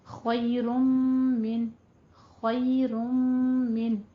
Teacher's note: من پہ اظہار حلقی کریں گے کیونکہ نون ساکن کے بعد حروف حلقی میں سے آ رہا ہے · آگے میم آ رہا ہے تو یہاں پہ ہم ادغام مال غنہ کر دیں گے، کیونکہ نون ساکن اور نون تنوین کے بعد جب حروف یرملون میں سے کچھ بھی حرف آ جاتے ہیں 6 حروف میں سے تو وہاں پہ غنہ کیا جاتا ہے.